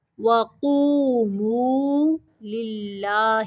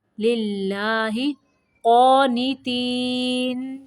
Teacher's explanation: یہ جو اللہ کا لام ہے اس کو باریک پڑھیں گے